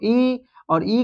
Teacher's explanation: इ की अपेक्षा यहां पर दीर्घ ई में दुगना समय लग रहा है। तो यहां पर दीर्घ ई हो गया दीर्घ स्वर।